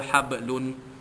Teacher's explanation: Hablun, ya, hablun, ya, ba mati, ba sukun di tengah kalimah, hukumnya qalqalah sughra, lantunannya sedikit saja